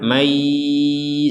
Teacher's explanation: Kalau kita menggabungkan nun sukun kepada ya, maka yang barusan jelas kita sekarang masukkan nun ini kepada huruf ya, sehingga yang awalnya man menjadi mai disertai dengungan